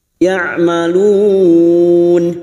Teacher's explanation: Bertemunya mad dengan huruf hidup yang dibaca waqaf mad arid li sukun, empat harakat kita panjangkan.